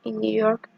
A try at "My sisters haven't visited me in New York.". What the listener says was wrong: No se olvide de la S, sisters, porque de otra forma pareciera que estuviera diciendo my sister haven't. My sisters haven't. Visited me. Como esta palabra también termina en T, ahí sí podemos pronunciar la ED del final. Visited.